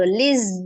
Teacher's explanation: Tasdid adalah penggabungan antara dua huruf yang sama, di mana satu hurufnya sukun dan satu hurufnya berharokat ya. Huruf zai juga memiliki sifat namanya as-safir, desis, maka didesiskan dulu.